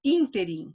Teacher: sílaba tônica é o in. Ela é uma palavra proparoxítona